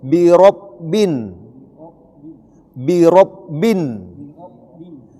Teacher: nun tasdik itu dibaca bin ditahan dua sampai tiga harakat